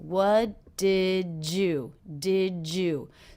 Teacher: of a J sound here jew-jew what did you did you so the D and the Y here are combining